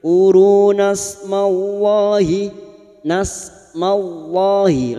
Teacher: Lam jalalah yang didahului fathah kita baca tafkim.